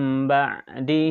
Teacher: maka bunyi nun sukun atau tanwin diganti bunyi mim sukun disertai dengungnya disertai dengung jangan bunyinya aja mim sukun tapi tidak ada dengungnya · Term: iqlab